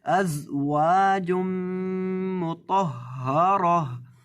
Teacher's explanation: زا کے اندر آپ نے سٹی کی آواز پیدا کر کے پڑھنا ہے، اس کو پڑھنا ہے ازواج مطہرہ، اور گول تا پر جب بھی وقف کرتے ہیں اس کو ساکن ہا سے بدل دیتے ہیں. · گول تا پر جب بھی وقف کرتے ہیں اس کو ساکن ہا سے بدل دیتے ہیں. اب یہاں گول تا پر وقف کرتے وقت اس کو ساکن ہا سے بدلنا ہے، ہائے ساکنہ سے.